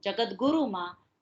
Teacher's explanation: ત અઘોષ અલ્પપ્રાણ છે, થ અઘોષ મહાપ્રાણ છે, દ ઘોષ અલ્પપ્રાણ છે એટલે કે ત અઘોષ અલ્પપ્રાણ અને દ ઘોષ અલ્પપ્રાણ એટલે કે ત નું દ માં પરિવર્તન થાય છે. અને એટલે જગત એ શબ્દનું જગતગુરુમાં તના બદલે ગ થાય છે, બરાબર છે.